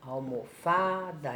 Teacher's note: Então, é o Fá, que é mais a sílaba tônica.